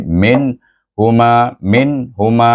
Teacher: kemudian Ma dibaca dengan mad asli jadi min Huma Min Huma Min jangan dipanjangkan jangan didengungkan diizharkan · Nun di sini sukun bertemu dengan ha dibaca dengan izhar halqi